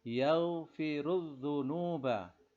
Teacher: Nah, ra-nya ini dibaca tafkhim karena berharokat dhammah. Al-dzunuba ini termasuk al-syamsiyah.